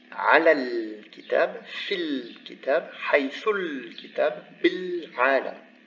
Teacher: Here the lam is maintained, but the vowel of liaison disappears. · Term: lunar consonant